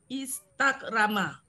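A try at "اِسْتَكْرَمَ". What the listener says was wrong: Ya, bagus. Selamat.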